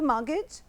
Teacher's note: be careful of this word, because we don't pronounce the T. It's a silent letter.